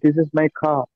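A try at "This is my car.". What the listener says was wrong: திஸ் இஸ் மை கார். அந்த கார் அப்படின்னு சொல்றது வந்து அந்த ஆரை வந்து நாங்க உச்சரிக்க கூடாது. ஆரை நாங்கள் உச்சரிக்க கூடாது. அப்ப நிறைய இடங்கள்ல வந்து ஆர் வந்து சைலண்டா தான் வரும்.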